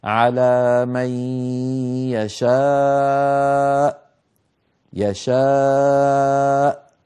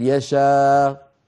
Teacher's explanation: عندنا بارك الله فيكم الوقف على الهمزة الساكنة إن كانت مسبوقة بألف، مر معنا في الآية 27 ثم يتوب الله من بعد ذلك على من يشاء، انظروا يشاء، الآن أنا أنطق ألف وفمي مفتوح ثم أريد أن أنطق همزة ساكنة، يشاء، كيف أنطق الهمزة الساكنة؟ أمر بسيط جدا، ما هو؟ قفل الوترين الصوتيين في الحنجرة، بس إذا تلاقى الوتران الصوتيان في الحنجرة انقفل الصوت وانقطع الصوت وخرجت الهمزة، ليست بحاجة إلى مزيد يعني مبالغة.